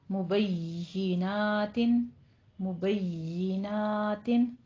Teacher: مبیناتن، مبیناتن وقف کریں گے تو تاپے ہمس ہو جائے گا